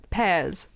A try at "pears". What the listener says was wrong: Okay, that one sounded more like pears. You said it like Pez. Initially. I was like the candy.